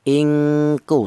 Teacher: Yang kuat dengungnya atau dengung lebih dominan daripada samarnya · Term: ifa adna